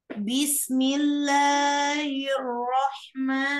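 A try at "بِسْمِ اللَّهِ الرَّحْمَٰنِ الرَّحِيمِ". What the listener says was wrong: lnya ketebalan bismillah tipiskan lagi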